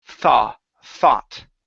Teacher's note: once you get to the aw your tongue goes back inside the mouth